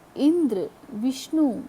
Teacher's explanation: उदाहरण के लिए इंद्र, विष्णु, इनमें संयुक्त अक्षर से पहले के अक्षर ई और वी, इंद्र में ई, विष्णु में वी पर जोर दिया गया है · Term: बलाघात